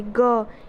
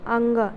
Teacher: अल्प प्राण में जब हम बोल के देखेंगे तो क, इसमें हमें हमारे मुंह से कम हवा निकल रही, ग, इसमें हमारे मुंह से कम हवा निकल रही है, अंग, यहाँ से हवा कम निकल रही है मुंह से बोलते टाइम।